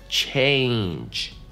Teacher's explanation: Change произносится с двойным гласным звуком A.